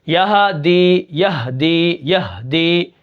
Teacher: تو ہم کیا کریں گے یہدی کو بھی کیا کریں گے ہا کو جو ہے بالکل ساکن کر کے پڑھیں گے